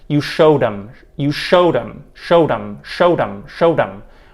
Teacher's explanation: the e d verb ending in showed is actually more of a flap than a true light release d sound